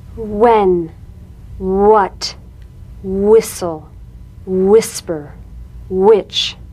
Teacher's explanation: Words that begin with WH are pronounced HW.